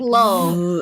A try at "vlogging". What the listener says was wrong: It's vlog, but not flow.